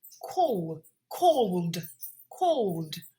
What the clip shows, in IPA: kɔːld